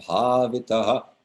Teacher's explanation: the vowel preceding the H will be echoed back, in this case, a short A. If that A were a long A, you would still echo a short version of the A, or any other vowel for that matter, back.